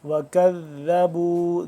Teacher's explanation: نرمی سے زبان کی نوک کو دانتوں کے باہر ذرا نکالیں گے، پھر اس طرح سے صحیح طریقے سے ادا ہوگا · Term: ذال